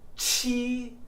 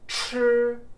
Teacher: Q and CH both sound like CH, one forward, one back.